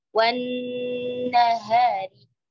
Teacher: masuk juga idgham, idgham syamsi, ya, jadi langsung masuk ke nunnya, ya, jadi lamnya tidak terbaca